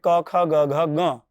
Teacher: અકાર અને ક વર્ગ એટલે કે ક ખ ગ ઘ ગ હકાર તથા વિસર્ગ એમનું કંઠસ્થાન હોય છે